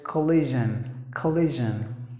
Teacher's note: When you pronounce the j, it should vibrate. If it doesn't vibrate, you're not saying it perfectly.